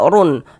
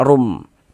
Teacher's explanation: Kemudian digunnahkan, didengungkan, sehingga di bagian rum, di bagian situnya tuh suaranya itu kita tahan sejenak, kita gunnahkan kira-kira sepanjang 2 harokat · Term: idgham bi gunnah